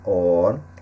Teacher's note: o acento agudo na primeira sílaba, or, indica que a sílaba é a mais forte e também a pronúncia aberta da letra O. Na outra sílaba, o til indica que o som é nasal, no caso de órfão e órgão, ok?